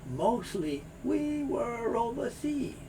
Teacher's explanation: You get a very soft R sound here, and the R moves over to the O, row.